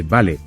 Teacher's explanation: Primero, imagina esta frase, alguien te dice vale, con un tono bajo, corto y serio